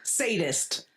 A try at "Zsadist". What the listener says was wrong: This is pronounced Zadist with a Z. The S is silent.